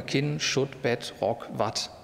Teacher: Und im geschlossenen Einsilbler, hier, Kinn, Schutt, Bett, Rock, Watt, mit ungespanntem Vokal.